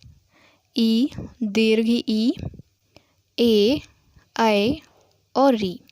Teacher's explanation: वे स्वर जिनके उच्चारण में जीभ का अग्र भाग अधिक क्रियाशील होता है उन्हें अग्र स्वर कहते हैं। अग्र स्वरों की संख्या 5 है।